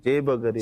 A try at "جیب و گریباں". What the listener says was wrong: جیب و گریباں ہم. غریباں نہیں ہے گریباں.